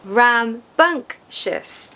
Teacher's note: So there's 3 syllables, rambunctious. Remember that the second syllable is stressed.